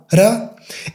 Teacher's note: you just hit once the roof of your mouth, ra. And in the other, you can hit like 3-4 times and it doesn't matter. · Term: soft R